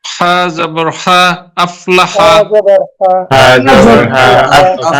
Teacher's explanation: হাটা চেপে বলতে হবে গলার মধ্যখান থেকে, সেটা হয়নি।